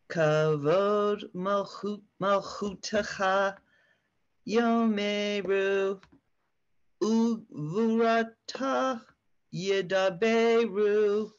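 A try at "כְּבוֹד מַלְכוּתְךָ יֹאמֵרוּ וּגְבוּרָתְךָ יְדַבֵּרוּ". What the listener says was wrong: Yes, you are. That was perfect. Keep going.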